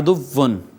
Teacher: دو پیش والے حرف پر وقف کرنا، کہ ہونٹ گول رہ جائیں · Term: وقف بالاشمام